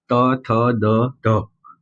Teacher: દંતીમાં જીભ દાંતના ઉપલા ભાગે રહે છે